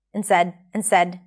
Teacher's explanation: notice how we dropped the D here, not 'and said - n' said, so it's easier and quicker.